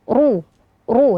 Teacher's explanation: dan setelahnya ada huruf ro yang berharakat dah ya Di mana huruf ro berharakat dhamah ini dibaca tebal